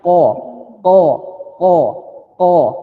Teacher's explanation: mengucapkan huruf qaf itu dia harus tebal jadi belakang lisan Anda ya nempel langit-langitnya